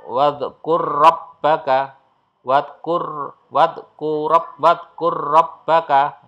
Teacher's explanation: huruf yang bersukun lenyap dihilangkan tidak ada atau dianggap tidak ada kemudian langsung masuk ke huruf berikutnya